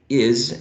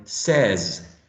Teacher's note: Is always z and never s, right? It's always voiced, right? It's alveolar and fricative. And z can be found here in is, and also can be found in says.